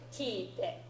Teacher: So it's got an extra e, a long e sound in there.